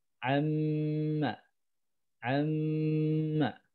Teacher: Jadi itu menahannya mim tasydid itu menahannya dua ketukan ya.